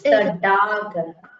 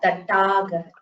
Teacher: It is not the first Dakara. It is the third Dakara. It is a Mridu Vyajana. You should not emphasize while pronouncing it.